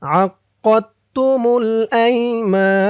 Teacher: নুনের উপরে জবরটা সাকিন হয়ে যাবে তিন আলিফ টান মধ্যে আরজি